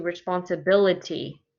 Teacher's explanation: there's six syllables and you can see which one is stressed it's the fourth syllable that's stressed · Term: stressed syllable